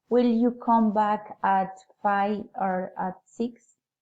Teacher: Alternative question, rising and falling intonation.